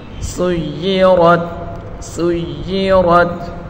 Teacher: یا کے نیچے بڑی حرکت ہے، بغیر کھینچے پڑھیں گے۔ را کو پر پڑھیں گے، را کے اوپر بڑی حرکت ہے، بغیر کھینچے پڑھیں گے اور را کو تا کے ساتھ ملا کر پڑھیں گے